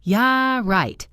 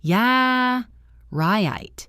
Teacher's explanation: The vowel breaks and stretches. It goes up and down